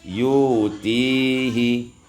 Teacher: ibdalul hamzati wawan, ditukar hamzah waw menjadi yu'tihi